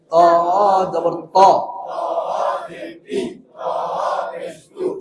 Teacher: সামনের উপরের দুই দাঁতের গোড়া থেকে মোটাভাবে আদায় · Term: সিফাতে ইস্তিলা